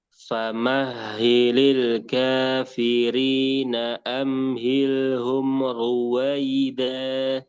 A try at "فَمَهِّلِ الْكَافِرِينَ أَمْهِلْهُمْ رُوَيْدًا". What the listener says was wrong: Mimnya jangan mantul. Amhilhum ruwaida.